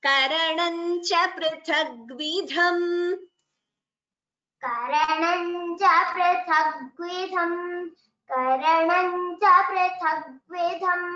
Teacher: You can either combine or you can chant the anuswara completely. Prithagvidham, tha and dha. Both are mahapranas, so even that should be chanted clearly.